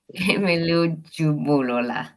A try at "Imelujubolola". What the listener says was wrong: Awesome.